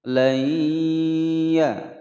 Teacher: nun sukun bertemu dengan huruf ya. Hukum bacaan idgham bi gunnah, dimasukkan dan didengungkan selama dua ketukan